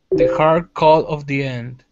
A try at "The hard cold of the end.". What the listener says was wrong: Okay, much better.